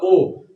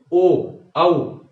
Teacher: ओष्ठ में जिह्वा स्पर्श नहीं करती है, ओष्ठ में पूरा का पूरा योगदान ओष्ठ का रहता है